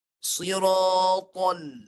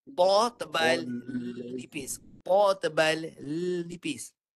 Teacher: Masuk pada lam, lebarkan mulut. Bagi nipis lam.